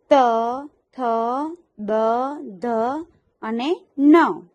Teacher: આ વ્યંજનોનો ઉચ્ચાર દાંતથી થાય છે એટલે કે જીભ દાંતને અડે છે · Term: દંત્ય